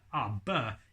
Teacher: very difficult because it uses your lips it's a plosive sound